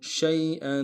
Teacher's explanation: یا کے سامنے لانا ہے، یا لین بغیر کھینچے پڑیں گے، حمزہ کے اوپر تنوین غنہ کریں گے